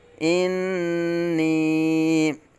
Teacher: اب یہاں بھی نون مشدد میں غنہ ہو رہا ہے، ایک الف تک کھینچ کے پڑھیں گے